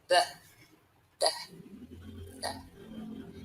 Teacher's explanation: the sounds are produced by placing the tip of the tongue between the teeth so that means the upper and lower set of teeth and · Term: the voiced one